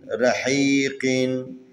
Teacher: یہاں پر را حروف استعلا میں سے ہیں، اس کے اوپر زبر ہے تو اس کو تفخیم پڑھیں گے